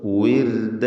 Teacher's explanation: റാഇന് തർക്കീഖാണ്, നേർപ്പിച്ചുകൊണ്ട് റാഇനെ ഉച്ചരിക്കണം. കാരണം അതിന് സുക്കൂൻ തൊട്ട് മുമ്പിൽ സ്ഥിരപ്പെട്ട കസ്റുമുണ്ട് എന്നതാണ്.